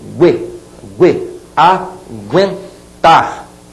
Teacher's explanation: aquele u tá sendo pronunciado de maneira muito rápida